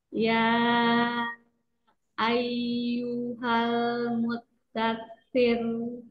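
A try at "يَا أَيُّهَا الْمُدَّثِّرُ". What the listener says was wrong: kasrohkan. Kasrohkan, lalu ujung lidahnya itu menyentuhnya jangan terlalu banyak dan rahang bawahnya tetap terjaga, jangan diangkat dulu sebelum apa selesai pengucapan roknya. Sir, jangan jadi sir. Nah, terus kalau dia udah naik tuh jadi tebal. Jadi tebal dia kalau dinormalin lagi.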